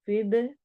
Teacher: दाल पे कलकला करेंगे